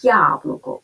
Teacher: крім звуку А ми ще чуємо тут приголосний м'який звук й Отже на початку слова буква я позначає два звуки й а